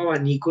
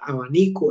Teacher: En la I es donde hago la tonalidad o la fuerza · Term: acento